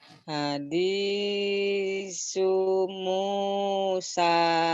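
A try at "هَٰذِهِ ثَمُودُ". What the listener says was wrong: Pinter, tapi sunya pendek doang ya Bu ya. Kan yang panjang yang saya contreng-contreng ke atas tuh yang digaris.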